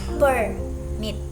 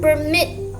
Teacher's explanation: Noun stress on the first syllable.